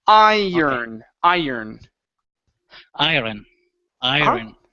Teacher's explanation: I first, but do not pronounce the O. The O is not going to sound in between the R and the N. It's only like you're saying turn.